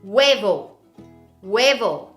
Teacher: the H is silent, so therefore, the first sound is that of the U.